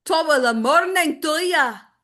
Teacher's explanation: if you were going to do Scottish, it's more flat and clipped